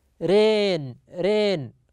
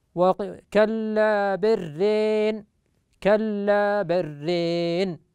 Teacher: الراء، وإذا أدغم هذه اللام في الراء فإنه يميل كلمة ران، يميل الألف وفتحة الراء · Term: إمالة